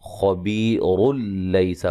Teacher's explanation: وقف کی صورت میں را کو باریک پڑھیں گے، ملانے کی صورت میں را موٹی ہوگی اور جب ملائیں گے تو پھر یہ نون تنوین کا ادغام ہوگا بلا غنہ